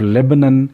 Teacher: لیبنن میں با ساؤنڈ جو ہے وہ وائسڈ ہے اور نیزل نہیں ہے